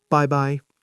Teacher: Yes, just like English, bye-bye. But give it a Chinese flavor. 4th tone, neutral tone.